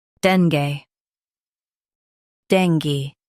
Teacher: Stress den and keep gay light. The G is soft.